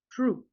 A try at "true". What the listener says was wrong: That's exactly how you pronounce the word true. We pronounce it as true. Most of the time when you see a TR, right, it's going to be pronounced as if it were CHR.